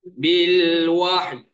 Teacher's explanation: >> Dia bukan y, dia bukan ya, dia bukan yu. Dia macam ada Y dekat hujung tu dia ada bunyi e.